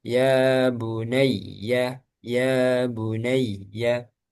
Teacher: Kemudian ya tasdid itu ditambah nabar